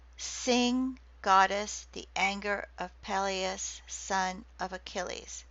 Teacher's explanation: Okay, so it's 6 feet. Each foot having a dactyl, which is a long and 2 short syllables, or a spondy, 2 long syllables. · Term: dactylic hexameter